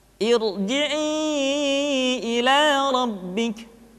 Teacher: Dan yang terakhir, ra sukun dipastikan dibaca dengan tafkhim manakala didahului oleh hamzah wasal